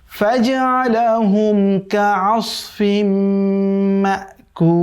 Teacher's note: এই যে দেখেন তানবিনের পরে মিম আসছে, তার মানে কি হবে? এটি তানবিনের পরে যদি মিম আসে আমরা জানি সেখানে ইদগাম করে মিলিয়ে পড়তে হয় এবং গুন্না সহকারে, যেহেতু মিম হচ্ছে ইদগামে বা গুন্না যেটি সেটার 4 হরফের 1 হরফ।